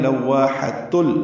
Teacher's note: ہا وسط حلق سے ادا کر دیں گے